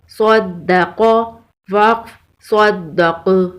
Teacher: وقف کی صورت میں قاف پر قلقلہ ہوگا. قاف حروف قلقلہ میں سے ہے.